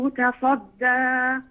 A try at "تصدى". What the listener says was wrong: رقق الدال، لاحظي الدال مرققة،